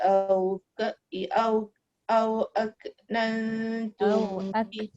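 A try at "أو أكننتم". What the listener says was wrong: Jangan bunyikan ke. Au aknantum.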